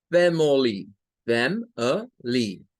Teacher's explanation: Family sí tiene un schwa cuando lo vemos como en tres sílabas. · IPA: /ə/